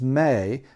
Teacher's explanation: May is in the middle of the mouth right so that tennis ball moves forward a little bit to the middle of your mouth